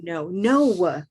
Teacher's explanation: you can really hear the W in no when these teenagers say no